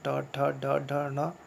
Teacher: मूर्धा से हम लोग बोलते समय वायु कहाँ टकराती है, मूर्धा से टकराती है।